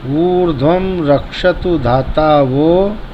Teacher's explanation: अधिकतर लोग वो को ओ बोलते हैं, तो ओ नहीं बोलना है। जब मंत्र जो है प्रगात गति से चलता है तो लोग जल्दीबाजी में गड़बड़ करते हैं, बोलते हैं ऊर्ध्वम रक्षतु धाता, वो नहीं बोलता, ओ बोल देते हैं जल्दीबाजी में।